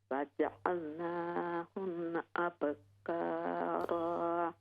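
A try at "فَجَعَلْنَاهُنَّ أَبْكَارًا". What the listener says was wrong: ہاں جی، غنہ کو پورا کریں، فجعلناہن ابکارا۔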